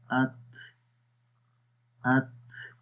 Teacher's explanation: जब हम्स हम करेंगे ता वाले हर्फ के अंदर तो सांस आहिस्ता से जारी रहता है। तो जैसे सांस जारी रहेगा यानी कि आहिस्ता से जारी रहेगा, उसी तरह उसकी आवाज़ में पस्ती आएगी, यानी कमज़ोरी होगी, उसकी आवाज़ में ज़ईफ़ हो जाएगी। · आखिर में देखें आवाज़ कैसे हो रही है, कमज़ोरी आ रही है आवाज़ के अंदर और सांस भी जारी हो रहा है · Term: हम्स की क्वालिटी